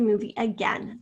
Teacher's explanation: the first syllable has a schwa and it's spelled with the letter a